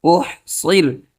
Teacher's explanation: را کو ہم باریک پڑھیں گے، موٹا نہیں پڑھیں گے